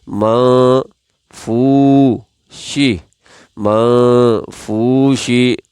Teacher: اب اس واو کی وجہ سے یہاں دونوں شرطیں موجود ہیں کہ واو مجزوم ہے، اس سے پہلے والے حرف پر پیش ہے، لہٰذا اس واو کی وجہ سے اس فا کو ایک الف یعنی ایک سیکنڈ کے برابر کھینچیں گے